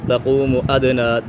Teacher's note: تقوم قاف پورا حرف مستعلی میں سے، تقوم ادنی دال کے اوپر کلکلا ہو رہا ہے